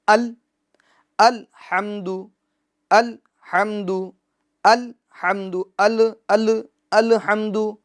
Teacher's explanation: بعض دفعہ ہم دیکھتے ہیں کہ لام کا جو سکون ہے اس میں جنبش دے دیتے ہیں، مثال کے طور پر الحمد، الحمد، تو یہ لام کے سکون میں جنبش نہیں ہوگی، یعنی آواز لوٹے گی نہیں، بلکہ سکون میں جمع ہوگا، ٹھہرا ہوگا، الحمد، الحمد، الحمد، الحمد۔